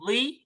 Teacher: ज, ज़ो वी, जी जी नहीं, वी। वी थोड़ा सा मुंह भर के निकालेंगे क्योंकि ये जी पुर लफ्ज है, मोटा पड़ा जाएगा।